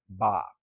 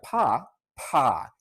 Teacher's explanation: For ba, your vocal cords are already vibrating and kind of catching the air as your lips part, and you don't feel as much of a puff.